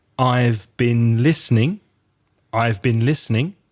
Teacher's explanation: in connected speech that's often pronounced bin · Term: weak forms